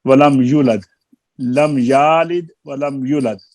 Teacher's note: ولم یولد کی واؤ کو مد اصلی مکمل نہ کی اور پیش کی آواز کے ساتھ پڑھ دیا